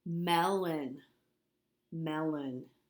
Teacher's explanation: the first syllable has the accent and the second syllable does not it has the schwa